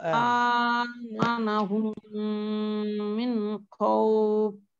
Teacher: জি, আতে এক আলিফ মাদ, হুমের মধ্যে গুন্না, কিন্তু নুন সাকিনের পরে ইজহারের হরফ এসেছে, গুন্না হবে না। · জি, তারপরে আমানাহুম মিন খাউফ। জি, আতে এক আলিফ মাদ, হুমের মধ্যে গুন্না